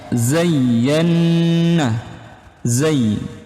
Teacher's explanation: Zayyana, zay itu ada penekanan di bagian huruf ya.